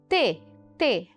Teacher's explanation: a ponta da língua Ou seja o ápice da língua ele encosta nos alvéolos aquela região que fica após a raiz dos dentes essa consoante também é desvaziada Ou seja no início da produção · a raiz dos dentes essa consoante também é desvaziada Ou seja no início da produção da consoante eu não tenho som de voz só tenho o impacto gerado pelo contato dos dois das duas estruturas de articulação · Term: alveolar